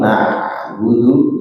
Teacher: Nah, disempurnakan tasydidnya, kemudian ain sukun na'budu ain sukun dia sedikit mengalir ya, dialirkan sedikit sehingga berbeda dengan hamzah